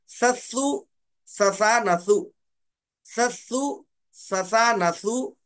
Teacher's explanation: زبان کی نوک جو ہے دانتوں کے باہر نکالیں گے اور حرف سا کو ادا کریں گے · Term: سا کا مخرج